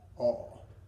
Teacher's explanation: We're making that dropped vowel just like ah, but we're changing our lips to be the O.